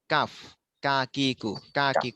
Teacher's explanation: ক এটা হলো 5 নম্বর মাখরাজ, জিহ্বার গোড়া থেকে একটু আগে বাড়িয়ে তার বরাবর উপরের তালুর সঙ্গে লাগাইয়া